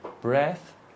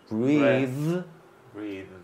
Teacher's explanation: Breath and breathe is the same, but the second one vibrates. Okay. So breath, you just let it out.